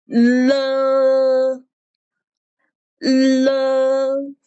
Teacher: And the next one, the l is a side tone. The side tone means that the airflow comes out from both sides of your tongue when pronouncing.